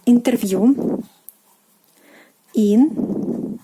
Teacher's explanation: the stress falls on the last syllable